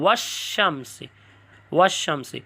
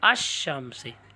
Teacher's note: اس وقت آپ لام کا تلفظ نہیں کرو گے، ال کا لام حرف شمسی میں مدغم ہو جاتے ہیں